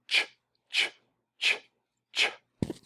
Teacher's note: When we say ch, ch, ch, ch, we realize it's unvoiced because it doesn't vibrate when we say ch.